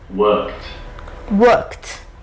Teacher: T, worked. Because we have here k is a voiceless.